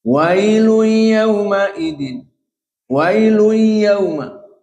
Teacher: langsung idghamnya kena, tanwin masuk ke ya, wailui kena.